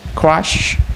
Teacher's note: It consists of three consonant sounds, that is voiceless viral stop ka, voice palato-alveolar approximants ra, and voiceless palato-alveolar fricative sha. And only one vowel sounds, it has mid-low front unrounded vowel a.